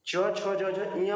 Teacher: च छ ज झ इया बोलेंगे तो ये तालु से निकलता है।